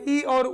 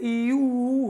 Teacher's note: लगभग बंद होने की स्थिति में ई और ऊ बोलने के लिए मुंह को बहुत खोलने की जरूरत नहीं है, आसानी से ई ऊ हो जाता है।